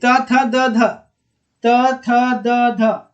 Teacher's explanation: त में, जी दांत में सट रहा है, ऊपर के दांत में जीभ सट रहा है